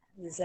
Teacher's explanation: yang za tu dia punya sebutan tu kita macam kasih keluar lidah sikit